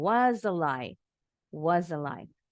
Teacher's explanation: S-nya bunyinya Z. Disambung.